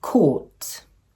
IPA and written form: kɔːt (court)